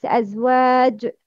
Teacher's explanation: Kalkala should be more clear in case of Waqf